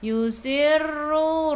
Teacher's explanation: Ra kena ada getaran takrir sifat hurufnya. Yusirru. Ra baca dengan tebal. · Ra baca dengan tebal. Ra baris depan. Ru dua harakat, ada waw mad asli.